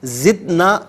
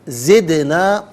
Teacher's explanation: جب حرف قلقلہ ساکن ہو تو آواز لوٹتی بھی محسوس ہو، زدنا غلط، زدنا، نون کھڑا زبرنا اور نون الف زبرنا دونوں طریقوں سے پڑھنا درست ہے۔